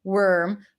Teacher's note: Here, you don't really hear the vowel. You just transition from the W to the R. Worm versus warm.